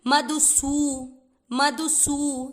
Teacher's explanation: देखो यहाँ पर मात्रा कैसे ध्यान रखनी है, मधु। धू में ऊ की मात्रा छोटी है और फिर सू की मात्रा बड़ी, तो कैसे खींचेंगे, मधुसू, मधुसू।